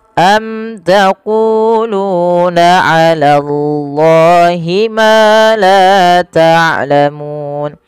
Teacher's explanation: sama sama panjang antara qu dengan lu karena ia mad thbi'i